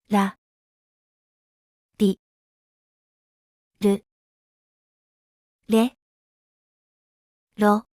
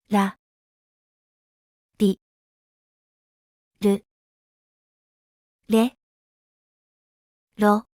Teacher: R sound is closer to the English L sound than the R sound. Lightly touch the back of your top front teeth with the tip of your tongue without curling it back as in English. Make a quick and gentle flap of the tongue against the teeth. Unlike the vibrating English R, the Japanese R has minimal vocal cord vibration.